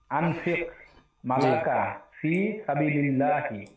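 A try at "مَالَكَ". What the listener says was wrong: জি, এখানে মায় একটু টান হবে, মালাকা।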